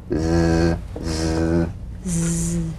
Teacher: The Z, cognate S, a voiced S sound fricative. The tongue rim should gently touch the upper gum ridge.